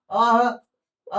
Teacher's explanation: अह का उच्चारण जो होगा आपको कंठ से हो जाएगा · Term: विसर्ग